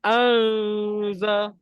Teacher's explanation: Itu lidah tu jangan kita naikkan. Jadi bunyi dia akan jadi Auza. Auza. Tak ada bunyi N pun. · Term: dengung sama